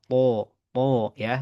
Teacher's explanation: Hanya yang membedakan huruf to ini karena dia huruf tebal, maka bagian pangkalnya dia terangkat. Ya, bahkan terkategori sifatnya itbaq, mayoritas lidah terangkat.